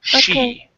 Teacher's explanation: Show is good, but she is coming out a little bit more like C. So push your lips out.